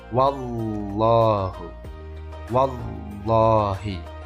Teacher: membaca huruf lam tapi tetap dengan memonyongkan bibir kita karena dia dibaca tafkhim